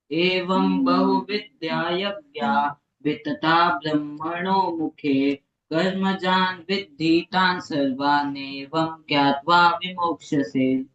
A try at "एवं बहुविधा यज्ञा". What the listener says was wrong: हाँ, लेकिन बहुविद्या क्यों बोला? एवं बहुविधा यज्ञ।